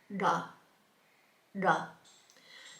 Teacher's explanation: And we have da, da. So again, it's a D sound, but the tongue is on the palate, and da, da. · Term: retroflex